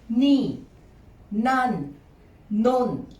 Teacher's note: these three related Thai words are pronounced with a falling tone